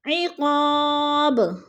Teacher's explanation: با ساکن ہے اور حروف قلقلہ میں سے ہے تو وقف کی صورت میں با کو ہلا کر پڑھیں گے، یعنی قلقلہ کریں گے